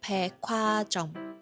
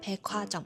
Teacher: 成먹히다。跟住第三個，大家會經常都會聽到噶啦，축하就係將個▁K▁音同後面嘅▁H▁音夾埋，變成一個送氣音版嘅▁K▁音啦。跟住咧係百貨店啦，百貨公司啦，佢哋係讀백화점，就係 將個▁K▁咧拎佢後面個▁H▁音，變成一個送氣版嘅▁K▁音啦